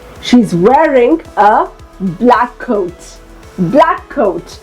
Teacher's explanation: we actually have to pronounce it once but we have to emphasize we have to just hold that sound a little longer